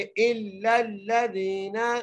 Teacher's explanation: حمزہ کو لام سے ملانا ہے اور پھر اس لام کو اگلے لام سے ملانا ہے، کیونکہ دونوں لام پر تشدید ہے اس لیے، اور مضبوطی سے پڑھنا ہے۔